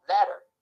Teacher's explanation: Here the T sound is replaced by an alveolar flap. What's happening here is that one articulator is thrown against another in a single gesture, hence tap or flap.